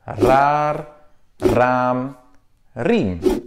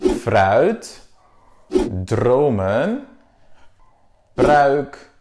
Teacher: la première manière de le prononcer, c'est le plus courant et ça s'appelle le R roulé, le rollende R, qui est utilisé normalement en début de mot